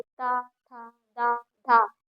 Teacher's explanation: तावर्ग का उच्चारण स्थान हमारा दंत हो जाता है · बोलने पे हमारी जो जीभ होती है वो हमारे दांतों से टकराती है